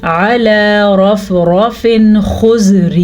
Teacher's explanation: را کو پر پڑھنا ہے کیونکہ را پہ زبر ہے، پھر را پہ زبر ہے، دونوں را پر پڑھے جائیں گے.